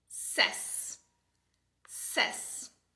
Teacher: você já sabe que é o schwa, então é um som fraco